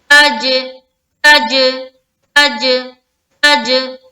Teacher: آواز ٹکراتی ہوئی معلوم ہونی چاہیے، یہ باؤنسنگ ساؤنڈ کہہ لیں. تج، تج، تج، تج. · تا جب جیم سے لگا نا، جیم کے مخرج میں جا کے لگا اور پھر وہاں سے لوٹ کر آپ کے پاس آ رہا ہے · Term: قلقلہ